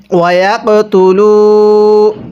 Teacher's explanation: এই কফের মধ্যে আমরা কলকলা করে পড়ব, অর্থাৎ ধাক্কা দিয়ে পড়ব